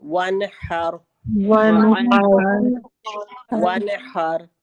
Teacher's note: ह हमारे दरमियानी हिस्से से आएगा, थोड़ा सा स्ट्रेस आएगा हलक का, और र को हम मोटा पढ़ेंगे